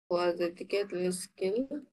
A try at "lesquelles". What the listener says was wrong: লেস্কেল না, লেকেল।